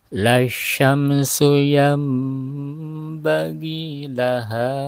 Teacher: Lasyamsu yang nun mati bertemu dengan ba ya, nun mati bertemu dengan huruf ba namanya iklab, langsung masuk ke dalam huruf ba.